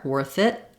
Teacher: When I'm saying worth it, you might notice that I'm not always saying that T with a release of air, worth it. I use an unreleased or a stopped T.